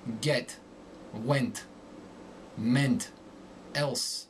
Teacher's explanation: the short e becomes more nasal